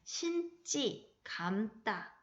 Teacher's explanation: 어간, 받침, 니은, 미음 뒤에서 된소리가 됩니다. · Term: 된소리되기